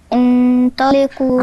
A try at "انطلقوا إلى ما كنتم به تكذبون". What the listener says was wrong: اخفاء، انطلقوا معايا، مفيش نون، انطلقوا إلى ما كنتم، أنا عندي هنا الميم وراها إيه؟ به، والميم دي مالها؟ ساكنة، عليها تشكيل قدامكم، الحرف مشكول يعني عليها فتحة أو ضمة أو كسرة، مفيش وراها إيه؟ الباء، حكمها إخفاء.